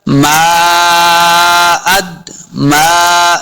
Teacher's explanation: मीम के ऊपर मद है, तो हमने इसको लंबा करना है।